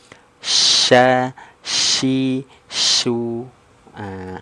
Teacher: Anginnya menyebar di mulut, ini kuat. Kalau ini dia ada desisannya. · dia dari Tengah lidah berarti kan Tengah lidahnya naik ke langit-langit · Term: at-tafashi, huruf syin